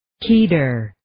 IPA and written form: 'kidɝr (Kedar)